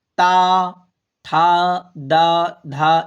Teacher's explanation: ये दांत से बोले जाते हैं। दांत लगेगा आपका। · ता वर्ग का उच्चारण स्थान क्या है? तो दंत है। दांत से बोले जाते हैं।